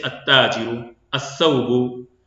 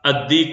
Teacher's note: جیسے التاجر، الثوب، تو یہاں پہ سا تا، الدیک میں دال، کیونکہ اس سے پہلے لام پڑھا نہیں جا رہا ہے بلکہ یہ یہاں پہ اس کے بعد والے جو حرف ہے اس میں مدغم کر دیا گیا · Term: حروف شمسیہ